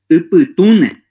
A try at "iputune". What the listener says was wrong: No, ape je y. Iputune.